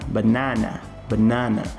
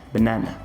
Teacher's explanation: Percebe que a primeira sílaba, eu quase não pronuncio ela é muito rapidinha quando eu vou pronunciar. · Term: schwa sound